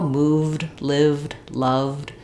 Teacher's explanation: So the letters ed are going to say different things depending on what word they are on. So in a word like loved, because the v is voiced, they're going to say the d sound, no vowel. So it's going to be like loved.